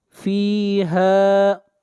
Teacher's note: فيها ہا کو کھینچ کر پڑھیں گے ایک الف کے برابر